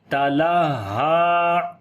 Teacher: ہا کے اوپر صفت ہمس بھی ہے، یعنی کہ یہ سانس جاری کریں گے